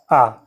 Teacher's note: मुख जो है सर्वाधिक खुलता है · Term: विव्रत